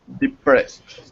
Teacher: This ed makes a t sound after an s.